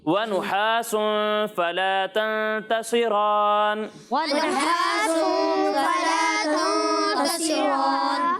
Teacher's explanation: सौद को भी मोटा पढ़ना है और रा को भी मोटा पढ़ना है